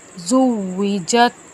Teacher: واو کی ادائیگی کو ہم منہ گول کر کے پڑھیں گے، دونوں ہونٹوں کو آپس میں نہیں ملائیں گے۔